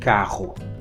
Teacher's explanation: Word initially, it is uvular. But here, even though it's intervocalic, when it's double R, it is uvular, carro. So that's the difference between caro and carro in Portugal Portuguese.